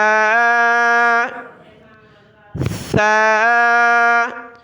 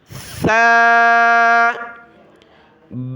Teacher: زبان کی نوک باہر نکالیں گے دانتوں سے اور بغیر سیٹی کی آواز کے اس کو ہم نے ادا کرنا ہے